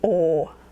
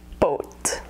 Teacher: the thing you should know about the English pronunciation in America is the W sound at the end of O. There's almost no pure O sound in American English unless you're from Minnesota.